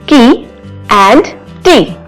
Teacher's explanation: These words have vowel sound long E and only one sound segment is different, that is initial consonant sound K and T. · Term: minimal pair